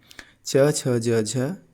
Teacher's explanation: इनका उच्चारण स्थान क्या है? तालु है।